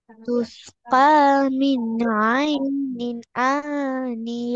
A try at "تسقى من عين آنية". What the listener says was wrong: அவசரப்பட வேணாம். ஐனின் நின் என்றதை முழுமையா உச்சரிங்க. ஐனின் ஆனிய. ஐனின் ஆ வரப்படாது. ஐனின் அ. ஐனின் அ மாறணும். அந்த இடம் மாறணும்.